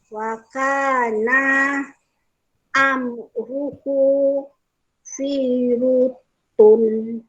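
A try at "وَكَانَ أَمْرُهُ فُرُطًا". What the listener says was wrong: Perhatikan huruf fa baris bawah ke depan.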